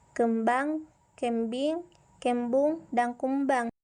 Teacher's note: bunyi vokal p b dan m adalah sama-sama bunyi bilabial